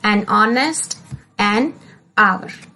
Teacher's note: So, we will put an before hour. The sound of H is silent in honest and hour both, and hence we say as an honest and hour.